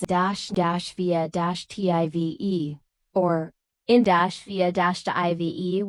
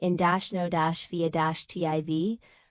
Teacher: with clear primary stress on the first syllable and secondary stress on the third